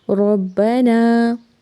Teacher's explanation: ربنا، رو کو با سے ملائیں گے، رو کو موٹا پڑھنا ہے اور با پر زبر ہے، جلدی سے پڑھیں گے۔ ربنا کو ایک الف کے برابر لمبا کریں گے۔